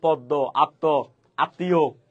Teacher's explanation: যদি কোন একটা শব্দের মাঝখানে অথবা শেষে যদি ম ফালা থাকে তাহলে ওই ম উচ্চারিত হয় না যে বর্ণের সাথে আসছে ওই বর্ণটা দুইবার উচ্চারিত হবে